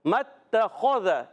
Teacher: اس دونوں تینوں پر حرکات ہیں، زبر کی حرکت ہے، اور میم بھی حرکت ہی ہے، میم کی زبر تا سے مل جائے گی، الف نہیں پڑھیں گے تو پڑھیں گے متخذ. اچھا، اس میں تمام حروف باریک ہیں سوائے خا کے. خا کو موٹا رکھنا ہے کیونکہ خا جو ہے حروف مستعلیہ میں سے.